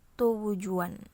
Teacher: akibat dari akan diucapkan bunyi U yang merupakan vokal bundar, sehingga bunyi T disertai dengan proses pembulatan bibir sehingga bunyi T terdengar sebagai bunyi T, W. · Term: labialisasi